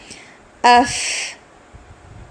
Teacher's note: آواز کو پلٹانا نہیں ہے. اف آواز جاری رہے گی